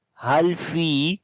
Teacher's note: this fi we long due to yamada, ya is coming with sukoon sign and there is kasra before